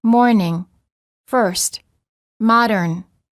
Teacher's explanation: the r before a consonant is also always pronounced in american english